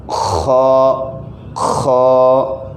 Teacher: حلق کے اوپر جو حلق کا حصہ ہے وہاں پر وائبریشن سی محسوس ہوگی، تو اس طرح ہم اس کو ادا کریں گے۔ ساؤنڈ اس کا تھوڑا موٹا ہوگا اور اس کو خیال رکھنا ہے کہ ہونٹ بھی گول نہیں کر دینے